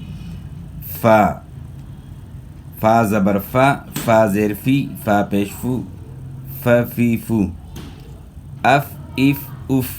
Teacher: فا کی ادائیگی میں دونوں ہونٹ نہیں ملیں گے، بلکہ اوپر والے دو دانت ثنایا علیا اور نچلے ہونٹ کا جو تری والا حصہ اس کے ساتھ لگانا ہے۔ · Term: فا کا مخرج